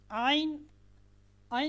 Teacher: عین کا جو مخرج ہے یہ گلے کا جو درمیانی حصہ ہے، آپ اپنے گلے کے 3 حصے کریں اور اس کا جو درمیانی حصہ ہے وہاں سے حرف عین ادا ہوتی ہے.